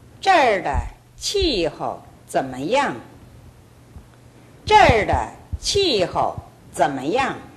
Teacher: 이때는 怎么样 할 때 양이 상당히 강조되어 있습니다.